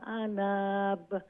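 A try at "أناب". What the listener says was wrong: জি ইগো আনাব লম্বইব, শুধু আনা হইছে খালি শর্ট, ইগো আনাব লঙ্গইব।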